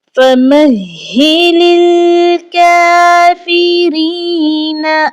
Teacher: ہم نے لام کو لام کے ساتھ ملانا ہے، بیچ میں آنے والا الف نہیں پڑھا جائے گا